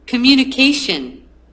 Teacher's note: this word one two three four five parts but the stress on part number four